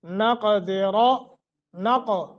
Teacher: تو یہاں غنہ بھی کرنا ہے. نقدر، نق قاف کو موٹا قلقلہ کریں گے، را کو موٹا کریں گے